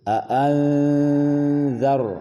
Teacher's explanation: dibaca samar-samar, namanya ikhfa, dan za-nya tidak ada huruf s yang muncul atau terdengar. Jangan dibaca a'anzar, berarti ada s zar, tetapi dihilangkan bunyi suara s-nya.